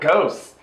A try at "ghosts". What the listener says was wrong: A ghost. You said goats.